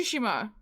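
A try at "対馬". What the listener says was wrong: A couple of vowels have too much enunciation on them.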